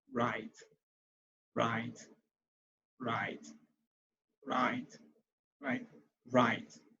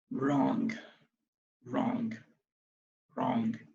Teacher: So the W is silent, and of course the R sound take over.